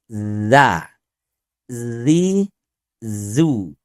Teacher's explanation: zai itu tidak sampai mendesis, tidak ada nafas yang menyertai. Tidak zan. Zan tapi dia clean, bersih ya karena sifatnya aljahar.